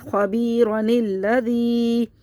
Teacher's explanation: ملانے کی صورت میں حمزۃ الوصل گر گیا، نون کو ہم نے پڑھ لیا تشدید سے ملا کر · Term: نون قطنی